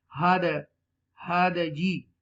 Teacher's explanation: Echo sound, bouncing letter. Dal is a bouncing letter. You will read with a bouncing. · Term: qalqala